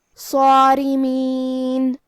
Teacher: ہم صاد کو اور مد الف کو دونوں کو بھاری آواز میں پڑھیں گے